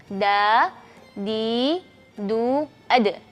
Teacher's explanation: perhatikan tidak keluar angin ketika melafalkan huruf Dal